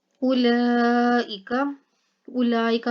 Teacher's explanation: मद्दा के बाद हमजा जो है वो उसी लफ्ज़ के अंदर आ रही है, तो यहाँ पर मद्दे मुत्तसिल होगा, ठीक है ना, तो इसको लंबा करके पढ़ेंगे। उलाइका ऑइला में आइन जो है ये मोटा करके और इसके अलावा हाइलक से निकाल के पढ़ा जाएगा, और यहाँ पर लाम जो है इसको लंबा करके पढ़ा जाएगा क्योंकि इसके ऊपर खड़ा ज़बर आ गया।